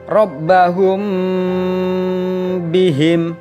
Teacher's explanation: samar-samar Hai sehingga pada saat akan bertemu dengan huruf ba bibir atas dan bawah dalam posisi tertutup jadi Ikhfa Syafawi harus dibaca samar-samar di bibir dan didengungkan lama